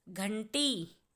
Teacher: घ के बाद न की आवाज आ रही है